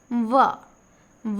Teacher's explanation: व बोलेंगे तो आपका जो दांत है व ऊपर वाला दांत नीचे वाले ओठ में हल्का सा टच करता है। तो दांत और ओठ के मिलने से जिस व्यंजन का उच्चारित होता है वह दंतोष्ठ होता है। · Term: दंतोष्ठ व्यंजन